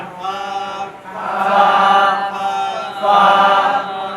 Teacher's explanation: নিচের ঠোঁটের পেট সামনের উপরে দুই দাঁতের আগার সঙ্গে লাগাইয়া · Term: 14 নম্বর মাখরাজ